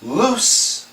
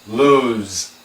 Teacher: L-O-O-S-E is loose. An S sound, loose. This is lose, a Z sound.